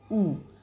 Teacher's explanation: ऊ में पीछे का भाग कार्य कर रहा है, तो ये पश्च स्वर है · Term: पश्च संवृत